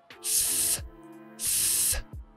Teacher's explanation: Y jueves empieza por TH, significa que tienes que poner la lengua entre los dientes, fuera de la boca, como si fuera la Z en castellano, y arranca desde ahí sin voz